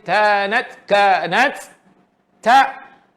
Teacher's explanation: ta tu mahmus keluar angin